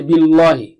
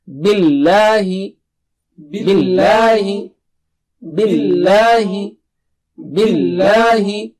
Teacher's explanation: Don't make the lam thick here. Don't say billahi. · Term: normal lam